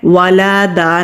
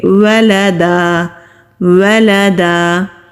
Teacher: जबर के साथ अदा करेंगे और अलिफ मद पर वक करेंगे यहां पर ख्याल करना है कि लाम को खीचना नहीं है